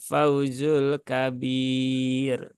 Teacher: rnya di sini ee terbaca tipis ya tidak terbaca tebal